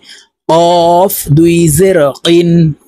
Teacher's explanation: কফ হরফ জিহ্বার গোড়া থেকে উচ্চারণ করতে হবে